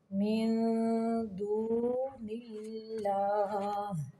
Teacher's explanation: یہاں پہ اللہ کا لام باریک پڑھیں گے